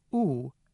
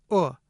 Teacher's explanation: The tense vowel is [u] as in boot, and the lax vowel is [ʊ] as in book. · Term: tense-lax pair